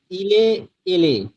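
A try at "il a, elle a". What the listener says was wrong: Almost there, শুধু আপনি এখানে হচ্ছে এটাকে এ না বলে আ, আ বলবেন, হ্যাঁ মাঝখানটা ইল এল, হ্যাঁ ইল আ এল আ।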